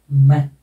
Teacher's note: म दोनों होठों को बंद करके नाक से हवा निकालेंगे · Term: नेजल्स